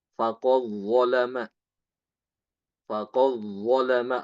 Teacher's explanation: mengidghamkan dal ke dho